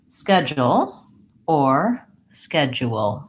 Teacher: the word has first syllable stress